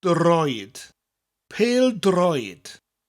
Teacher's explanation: Notice droid has got a rolling R.